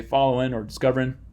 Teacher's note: in appalachian english you would drop that g as it were